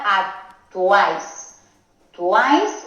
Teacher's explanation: Tuáis se pronuncia en el mismo golpe de voz, sería una sílaba. O sea que estas tres vocales formarían un diptongo, igual que aquí estas tres, igual que aquí estas tres. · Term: triptongo